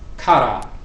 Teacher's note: you could roll the r very forcefully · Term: rolling r